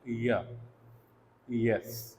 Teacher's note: Passage इतना ज़्यादा wide है कि कोई फ्रिक्शन यहाँ पर नहीं हो रही है, काफ़ी ज़्यादा फ्री पैसेज जो है एयर को अवेलेबल है। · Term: अप्रॉक्सीमेट